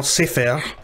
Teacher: syllable which is fair it's on the previous syllable say so in this case the tonic syllable is say rather than fair